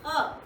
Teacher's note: थोड़ा सा गले के अंदर से आप बोलिए, हलक से बोलते हैं ना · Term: नुक्ता